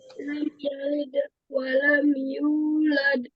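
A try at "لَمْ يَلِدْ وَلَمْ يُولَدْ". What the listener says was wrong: Ya, jadi walamnya itu jangan dipanjangin, jangan nggak boleh dilamain ya. Walam yulad. Walam, langsung walam. Jangan diayun, jangan walam yulad. Itu enggak. Jadi jadi terkesan ada matobi'i di situ, padahal enggak ada. Gitu ya.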